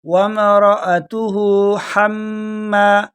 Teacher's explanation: یہ حَمَّا ہا جو ہے یہ باریک والا ہے، خَمَّا نہیں ہے، یہاں پر مسٹیک لوگ کرتے ہیں.